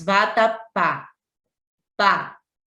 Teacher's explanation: A sílaba pá está sendo a mais forte, é a última.